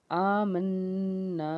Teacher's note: برابر کھینچ کے پڑھنا ہے، اور میم کے بعد نون ہے، نون مشدد ہے تو غنہ ہوگا